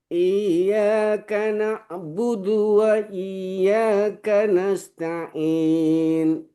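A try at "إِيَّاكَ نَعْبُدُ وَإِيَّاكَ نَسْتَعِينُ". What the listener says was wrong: Sin sukunnya jangan terlambat. Langsung nasta'in. Ya, nasta'in.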